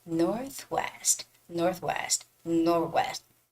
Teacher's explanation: You don't have to actually clearly make that TH sound, but rather say northwest, northwest, sort of like, go over that TH sound.